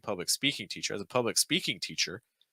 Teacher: typically speaking actually gets the stress